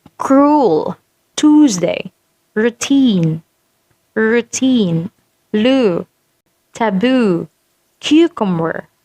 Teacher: So your tongue is at the back and your jaw is highest. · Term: long oo